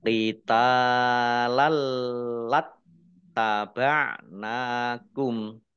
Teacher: Na'lamu ain ya, na'lamu qitalalat tak fathah alif mat tabi'i 2 harokat, fathah tanwin bertemu dengan huruf lam idgham bila gunnah masuk dengan tidak mendengung, yaitu tanwin langsung masuk ke huruf lam ditandai lamnya ada tasdidnya, lamnya dibaca double